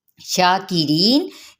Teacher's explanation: अब जा की ज़ेर को हमने शीन के साथ मिलाएंगे और शीन पे अलिफ मद्दा का कायम मुकाम है, एक अलिफ या 2 हरकत के बराबर खींचते हुए। शाकिरीन, रा बारीक पढ़ा जाएगा ज़ेर की वजह से और या मद्दा का भी कायदा हो रहा है।